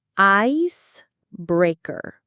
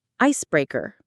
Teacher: The stress, the strongest part of the word, is on the first syllable.